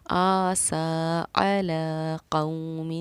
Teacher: اس کے علاوہ یہاں کھڑا زبر، یہاں کھڑا زبر، یہاں کھڑا زبر. کھڑا زبر کو بھی ہم حروف مدہ کی طرح تھوڑا کھینچ کر پڑھتے ہیں، اس لیے ہم نے اس کو پڑھا آسا علی قوم.